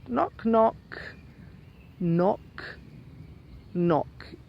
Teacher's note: K n ot you don't pronounce the K · knock so it starts with the the pronounced n of course when you say it twice you've got the end of the word which connects to the next word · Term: silent K